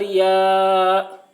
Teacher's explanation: ای یا الف زبر یا، الف سے پہلے زبر ہے، الف مدہ ہوا، اس لیے الف مدہ کو ایک الف کے برابر کھینچ کر پڑھیں گے